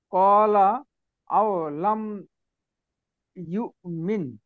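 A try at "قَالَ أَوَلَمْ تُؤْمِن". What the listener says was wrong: আওয়ালাম ঠিক না, এখানে এভাবে হবে না। আচ্ছা, আওয়ালাম একসাথে হবে, হ্যাঁ।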